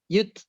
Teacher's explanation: Ibu taknya sedikit ada aliran nafas ya.